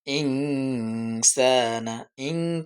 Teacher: নুন সাকিনের পরে সিন হচ্ছে হরফ এজন্য আমরা গোপন করে পড়বো